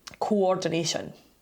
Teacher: And it's where there are two separate vowel sounds in adjacent syllables with no consonant between them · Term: vowel hiatus